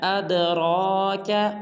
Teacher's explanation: اد کی دال کو قلقلہ کرنا ہے اور را کو پورا ادا کرنا ہے